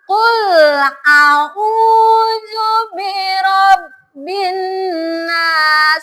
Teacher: Lihat panjang pendeknya. Bukan binas, tapi ditahan, itu 2 harokat. Dan ini juga harus bisa dibedakan huruf alif dan ain.